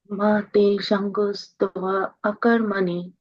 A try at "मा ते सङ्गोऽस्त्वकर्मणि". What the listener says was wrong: No, if you're doing stva, then you should not do the A again, right? It's only one there. So one way of doing it is, one way of pronouncing it is like that.